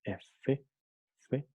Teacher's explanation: notamos que el labio inferior toca en los dientes superiores, pero sin impedir el flujo del aire, dejando que el aire fluya, pase por un pequeño resquicio, ¿no? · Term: labiodental